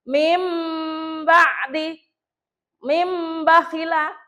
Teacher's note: nun sukun ketemu ba itu engko mingkem rodo suwe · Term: iqlab